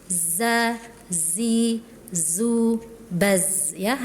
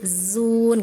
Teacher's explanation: Huruf zai itu punya sifat shofir artinya berdesis.